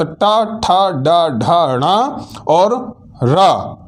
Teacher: मूर्धन्य वर्ण ये कहलाते हैं क्योंकि इनका उच्चारण जो है मूर्धा से होता है